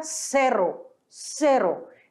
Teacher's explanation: o r ele sempre vibrante então fica Serro Serro não é zero lembra também que o e ele tem som de e não · r ele sempre vibrante então fica Serro Serro não é zero lembra também que o e ele tem som de e não de é